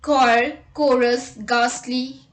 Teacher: h is often not pronounced when it comes after c g or r